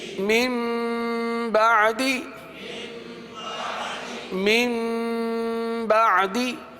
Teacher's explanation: نون ساکن اور تنوین کو میم سے بدل کر اخفا کریں گے، یعنی گنہ کر کے پڑھیں گے، اس کو اقلاب کہتے ہیں۔